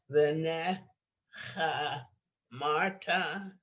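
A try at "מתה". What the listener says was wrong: There's no resh in there. Mata.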